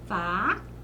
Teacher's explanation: a penúltima sílaba é a sílaba tônica e essas chamamos de paroxítona.